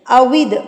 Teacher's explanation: واؤ جو ہے ہونٹوں کی گلائی سے ادا ہوتا ہے